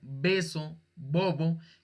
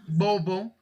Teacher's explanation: Esa B como beso, bobo, casi siempre suele juntar los dos labios. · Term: B bilabial